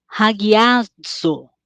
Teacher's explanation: eu tenho a aspiração na primeira letra, por isso eu vou ler com o som de H. Guiar, ele vai ser um ditongo, porque o acento está na segunda letra, na segunda vogal, que é o alfa. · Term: aspiração áspera